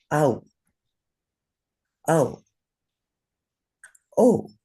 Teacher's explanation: the o sound is created with the uh and the simple vowel oo and that sound to the sanskrit ear is oh it's not exactly the same in our western languages.